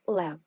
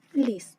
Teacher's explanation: звук л може вимовлятись твердо як у слові Лев а також може вимовлятись м'яко ль як у слові ліс